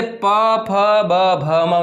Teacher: આ 5 વર્ણો બોલવા સમયે આપણો શું થાય છે? જે બંને હોઠ છે એ બંને ભેગા થાય છે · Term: ઓષ્ઠ્ય